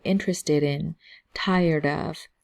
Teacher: So the D's and T's both have a rolling sound to it.